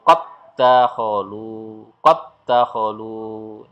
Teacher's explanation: Jadi dal yang bersukun ini seolah-olah tidak ada, langsung masuk ke dal yang berharokat dan langsung masuk ke tasdid. Qad dakholu, ya, jadi dal yang pertama seolah-olah hilang.